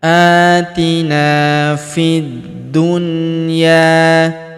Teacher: Alif lamnya tidak dibaca. Alif lam syamsiyah.